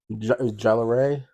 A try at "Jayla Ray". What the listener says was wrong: Jayla? Jayla Ray? I think that you pronounced the A, so Jayla.